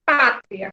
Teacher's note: ditongo crescente, que é quando vem primeiro, nessas 2 vogais, vem primeiro a semivogal.